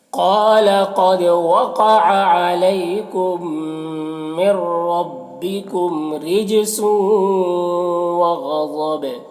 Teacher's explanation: غین الضا دونوں حروف مستعلیہ میں سے ہے، اور یہاں پر وقف کریں گے تو با کا جو دو پیش کی تنوین سکون سے بدل جائے گا تو پھر با میں قلقلہ ہوگا · وقع یہاں پر قاف حروف مستعلیہ میں سے، علیکم یہاں پر یا ساکن سے پہلے لام ہے تو یا لین ہوگا، اسے نرم آواز کے ساتھ جلد پڑھیں گے